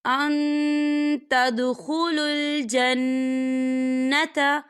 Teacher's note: تو ہم یہاں اکفا کریں گے، نون ساکن کی آواز کو ناک میں چھپائیں گے۔